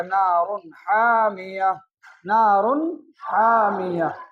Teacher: تنوین میں اظہار کریں گے، یعنی ہم غنہ نہیں کریں گے، بغیر غننے کے ہم اسے صحت کے ساتھ یعنی بالکل معروف پڑھیں گے، اور پڑھیں گے نار حامیۃ، اور وہاں وقف کر دیجئے گا تو اس کو پڑھا جائے گا نار حامیہ، نار حامیہ۔